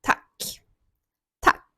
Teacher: ми вимовляємо дуже коротко, роблячи акцент на приголосній к